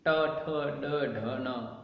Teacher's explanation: उच्चारण स्थान मूर्धा नाम मूर्धन्य